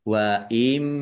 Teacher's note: bunah masuk dengan mendengung yaitu mendengung mim ditandai mimnya ada tasdidnya mim tasdid dibaca gunah atau mendengung ditahan biar tanpak dengungannya